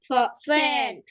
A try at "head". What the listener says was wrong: এটা ফ না, এটা হচ্ছে হ, হ, head, not fed, head.